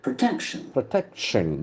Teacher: The accent falls to the second syllable.